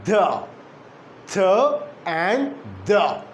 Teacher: the tip of the tongue comes in between the upper and the lower teeth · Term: interdental